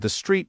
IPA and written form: ðə striːt (The street)